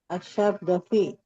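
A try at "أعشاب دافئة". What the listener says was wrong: Asyab. Nah, asyabad dafi. Asyab. Asyabad dafi. Dafi bukan pakai ain ya. Pakai hamzah. Dafi.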